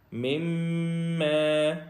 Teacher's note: میم کے اوپر تشدید ہے جس کی وجہ سے یہاں پہ غنہ ہوگا، آگے کاف باریک ہے۔